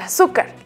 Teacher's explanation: la palabra azúcar, tiene acento en la U, en la vocal U